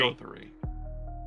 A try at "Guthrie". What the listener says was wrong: Not Guthrie. It's definitely a U. Guthrie. It sounds German.